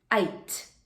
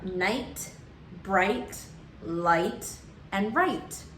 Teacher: the vowel I is also long and the GH is silent, and the consonant T gives the ending sound to the word.